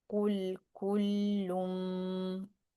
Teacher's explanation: And we join with the meem. Instead of saying lun, we'll say lum. · So we're doing the ghunna by pressing for 2 counts.